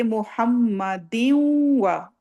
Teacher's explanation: تنوین کے بعد واو آئی ہے اس کا مطلب ہے ہم نے تھوڑی سی نون کی آواز لینی ہے اور تھوڑا سا واو کی آواز لینی ہے